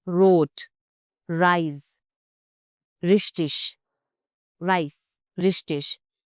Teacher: German R is produced deep in the throat, nothing like English. It can also roll off the tongue, giving it that unmistakable German edge.